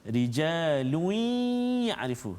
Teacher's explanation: masuk lun tu, tanwin tu masuk dalam ya, dengung 2 harakat. Lui. Sebab ada yang baca rijalun, tak kena. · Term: idgham ma'al gunnah